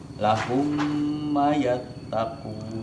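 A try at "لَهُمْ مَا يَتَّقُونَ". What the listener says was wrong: Ulangi, manya panjang. Nah, jadi Yang pertama tadi lahum, ya, ketemu lahum ma yattaqun.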